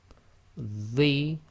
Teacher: with the The, remember your tongue is between your 2 front teeth